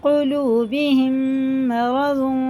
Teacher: میم ساکن کے بعد میم آ رہا ہے تو ادغام شفوی ہوگا، غنہ کر کے اس کو پڑھنا ہے